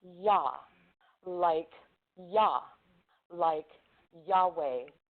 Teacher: short and frail, an open back vowel. Your lips do not curve round